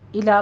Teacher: الی صراط میں دھیان رکھنا ہے کہ الو نہیں کہنا، الا پڑھنا ہے، لام باریک رکھنا ہے